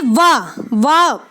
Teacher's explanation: आपके ऊपर वाले दांत नीचे वाले होठ से टकराएंगे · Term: दंत ओष्ठे